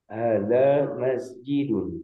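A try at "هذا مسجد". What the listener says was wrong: Haknya ditambah panjang sedikit Pak. Hada masjidun.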